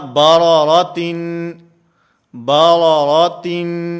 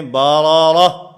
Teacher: دوسری صورت وقف بالابدال کی، کسی جملے کے آخر میں، کسی کلمہ کے آخر میں آخری حرف وہ گول تا ہو، تائے مدورہ، گول تا، تو وقف کی حالت میں یہ گول تا ہا سے بدل جاتی ہے